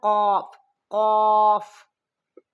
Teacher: موٹا حرف ہے، دو نقطوں والا موٹا قوف ہوتا ہے، اسے کاف نہیں پڑھنا